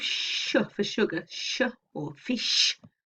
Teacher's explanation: So if you think of sh for sugar, sh, or fish, the end sound in sh, I hope you can, when you make that sound, I hope you do notice that your tongue rises up and it's just hitting that place just behind the alveolar ridge. It's just on the hard palate. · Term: post-alveolar